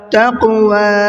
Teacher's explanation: تا قاف زبر تق، واو کھڑا زبر وا، تقوا، یہ قاف میں قلقلہ ہوگا اور واو کو کھینچ کر کے پڑھنا ہے